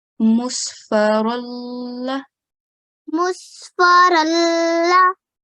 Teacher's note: Okay, as far as the idgham goes, that was perfect. But on the ra, we don't have a tashdeed. Okay, so we have to be very careful not to stress on it.